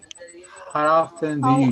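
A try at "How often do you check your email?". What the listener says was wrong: It's how often. Remember, we don't pronounce T. How often?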